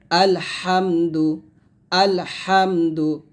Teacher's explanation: হাটা হলকের মাঝখান থেকে নিয়ে আসতে হবে